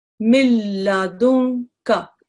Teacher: no nasal sound is going to be produced in other words the noon is going to be dropped